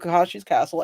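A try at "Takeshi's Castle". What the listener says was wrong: Takashi with a T. With a T.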